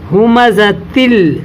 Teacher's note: جب چھوٹا نون بیچ میں آیا ایسا تو اس نون کو آپ آگے والے حرف میں ملا کر پڑھیں گے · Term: تنوین